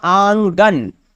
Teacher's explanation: یہ جو بعد والا نون ہے پوری طرح سے ظاہر ہے، لیکن پہلے والا جو نون ہے اس کی آواز ناک سے نکلتی ہے۔ ہم آنگن نہیں بول سکتے، آنگن بولیں گے، یعنی نون کی آواز ناک سے نکلتی ہے۔ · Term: نون غنہ